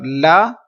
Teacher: ناک میں آواز نہیں جائے گی